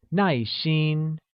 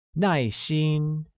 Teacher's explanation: uses a falling tone on a and a high level tone on I